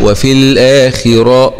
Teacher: والراء هنا طبعا مفتوحة ومفخم